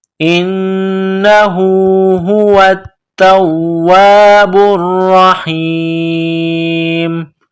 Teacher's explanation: ح یا زیر حی، میم پیش مو، هو التواب الرحیم، هو التواب الرحیم. جب اس آیت پر رکیں گے، سٹاپ کریں گے تو میم کو سائلنٹ کریں گے